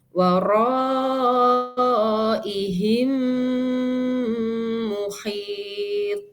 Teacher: Ada rasa getar di rongga hidung ya, karena ada gunnahnya, kemudian kita tahan 3 harokat ya. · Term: idgham mimi